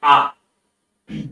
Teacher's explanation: যায় না বা সামনে যায় না বা পেছনে যায় না ঠিক জিভা মুখের মধ্যে আমাদের ঠিক মাঝামাঝি অবস্থায় থাকে এবং সেক্ষেত্রেই মাঝামাঝি অবস্থা থেকেই উচ্চারিত হয় আ তার [গলা পরিষ্কার